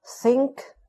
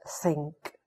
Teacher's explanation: the sound th, a voiceless dental fricative